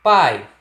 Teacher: quando eu pronuncio a palavra pai, você percebe claramente que o som sai apenas pela boca. Não existe nasalização de nenhuma dessas letras, seja vogal, consoante ou semivogal, tá? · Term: ditongo oral